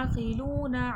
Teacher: के साथ। या अकलूना ऐन का मखरज है वसतुल हलक हलक के दरमियानी हिस्से से ऐन आदा होगा · عین کا مخرج وسط الحلق، حلق کے درمیانی حصے سے عین ادا ہوگا۔ لو میں واو مدہ ہے، کھینچ کے پڑھا جائے گا۔